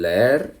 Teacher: en leer, como son dos vocales fuertes, se puede separar. Formarían dos sílabas, entonces hay un hiato.